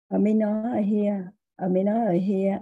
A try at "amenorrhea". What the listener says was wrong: So this is a little tricky. So that little H there is usually silent. So it's amenorrhea.